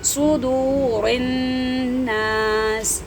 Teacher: فا یا زیر فی ہے، فا زیر فی نہیں، فا یا زیر فی کو کھینچیں گے. فی صدور صاد کو موٹا پڑھیں گے سین کی نسبت